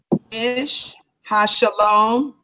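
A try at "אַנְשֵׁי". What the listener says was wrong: It don't say ish. It don't say ish What that say?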